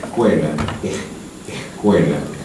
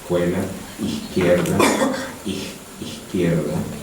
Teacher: Casos de fricción homorgánica, por ejemplo, antes de K, la fricción correspondiente homorgánica es la J